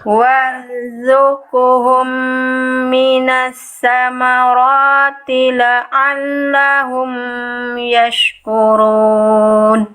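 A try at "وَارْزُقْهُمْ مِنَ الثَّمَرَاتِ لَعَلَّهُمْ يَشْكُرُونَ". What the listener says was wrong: Mim sukunnya jangan ditahan Bunda. Cukup dijelaskan aja. Ya, la'allahum ya, jangan la'allahum. Nah, amnya jangan ditahan. Mim sukun itu ditahan kalau ketemu mim lagi, kalau ketemu ba. Mim sukun selain mim ketemu dan ba enggak dibaca tahan.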